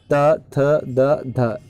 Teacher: त थ द ध यह सारी जितनी है यह सब दंत ध्वनियां है